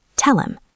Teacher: The H disappears. The L connects to the M. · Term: the H drop, H drop